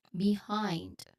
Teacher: So behind so there the next syllable hind there's a dip tongue there I and then you stress on this one you stress on the second syllable hind so it's it kind of like rhymes with mind